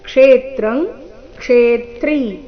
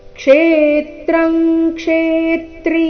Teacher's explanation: ಆಘಾತಗಳ ಮೇಲೆ ಗಮನ ಕೊಡಬೇಕು ಕ್ಷೇತ್ರಂ ಕ್ಷೇತ್ರಿ ಈ ರೀತಿ ಇಲ್ಲ ಕ್ಷೇತ್ರಂಗ್ ಕ್ಷೇತ್ರಿ ಎರಡು ಶಬ್ದಗಳಲ್ಲಿ ಕ್ಷೇ ಈ ಅಕ್ಷರದ ಮೇಲೆ ಆಘಾತ ಬರಬೇಕು ಕಾರಣ ಮುಂದೆ ತ್ರ ಮತ್ತೆ ತ್ರಿ ಸಂಯುಕ್ತ ಅಕ್ಷರ ಇದ್ದ ಕಾರಣ ಕ್ಷೇತ್ರಂ ಕ್ಷೇತ್ರಿ